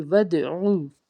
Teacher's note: آگے واو دال زبر ود، دال حرف قلقلہ کا حرف، جب اس کو ادا کریں گے تو آواز لوٹ کے آئے گی